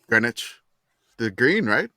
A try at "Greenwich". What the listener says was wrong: It's not pronounced green.